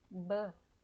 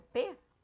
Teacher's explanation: Quando você diz p, que é o p, não tem a vibração. Então, o p é uma consoante unvoiced. Ela não é sonora, ela é surda. Então, não produz uma vibração nas cordas vocais.